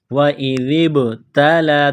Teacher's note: ہیں، وَإِذِ ابْتَلَى، ذال کو با کے ساتھ پلس کرنا ہے، ذال کو پڑھتے وقت زبان تھوڑی سی باہر نکالیں گے ، ذال، ذال کو با کے ساتھ ملانا ہے، با ساکن